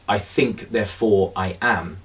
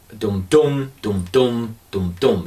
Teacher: If I take the phrase, I think, therefore I am, you have this dum-dum, dum-dum, dum-dum. You have an unstressed syllable followed by a stressed syllable.